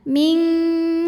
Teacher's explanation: Sebab nun sukun menghadapi huruf kaf, maka bunyi nun sukun samar-samar siap-siap menuju makhraj huruf kaf yaitu pangkal lidah ya, siap-siap ke pangkal lidah disertai dengungan. Ming langsung masukin, suara banyak masuk hidung. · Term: ikhfa ab'ad